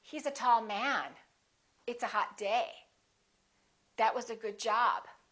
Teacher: emphasize the noun not the adjective